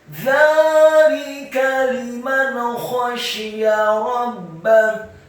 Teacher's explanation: dzanya dibaca tipis, tarqiq, lidahnya agak keluar sedikit, fathah dua harokat karena harokatnya tegak. Kemudian lamnya dibaca tipis, kasrah satu harokat, kafnya dibaca tipis, fathah satu harokat.